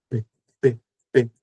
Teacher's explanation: Então, neste caso em que o ar é totalmente bloqueado por um momento, né, e depois liberado com uma pequena explosão · O P é um som surdo. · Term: oclusiva, Bilabial, oclusiva